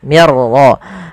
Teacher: ro itu punya sifat namanya sifat takrir tapi takrirnya hanya satu saja tidak boleh berulang